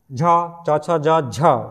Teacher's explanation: च वर्ग के वर्णों को क्या कहते हैं स्पर्श संघर्षी वर्ण कहते हैं